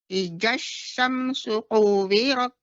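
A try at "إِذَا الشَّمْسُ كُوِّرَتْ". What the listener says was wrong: Kemudian sedikit, Nek, untuk kuwirat kaf, bukan kuwirat, bukan qaf, tapi kaf. Kuwirat.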